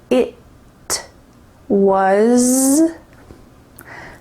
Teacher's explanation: There's no T sound that's clearly pronounced here. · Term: stopped T